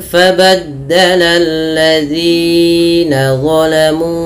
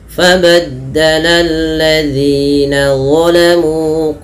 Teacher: ada mad thabi'i panjangnya dua harakat